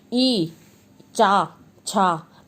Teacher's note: ई जबान जाके ऊपर लगती है आपकी मुंह के अंदर, ई चा छा मतलब जबान जब आपके बोलने में ऊपर की तरफ लगती है, तालु से टकराती है तो उसको तालव्य बोलते हैं